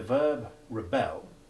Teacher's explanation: the verb rebel which has unstressed short e3 followed by stressed short e1